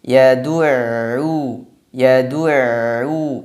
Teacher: Kemudian ada ain, tasydid setelahnya. Ain sifatnya tawasud. Sebagian suaranya ditahan, sebagian lagi dialirkan.